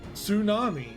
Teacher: Americans don't say the T in tsunami. · I'm intentionally not pronouncing the T, and I normally don't pronounce the T.